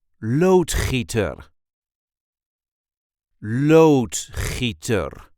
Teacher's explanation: This is the way we say loader loader. There is a light emphasis on the first syllable.